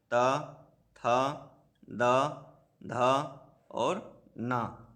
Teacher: ऊपरी दांतों के निकट से इसका उच्चारण स्थान है